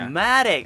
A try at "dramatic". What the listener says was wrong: Yeah, you push the second syllable, not the first syllable. Dramatic. like it's kind of like in it's almost like in Japanese, certain syllables there's a pattern, up down, up down. Same thing. Although with English it's not consistent.